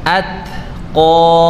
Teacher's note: ada udara yang keluar ketika membaca huruf ta mati ya. Atqa, bukan atqa tapi at, bukan juga bukan juga bukan tapi atqa ya.